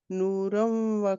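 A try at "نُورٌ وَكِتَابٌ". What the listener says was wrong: नहीं है, नूरुम, नूरुम व, क्योंकि पेश है ना दो।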